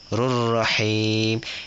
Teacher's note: Ra tu masuk ke ra yang depan dia. Sebab tu kita kata idgham. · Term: idgham bila gunnah